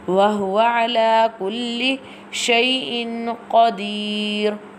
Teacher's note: ayn pronounced from the middle part of throat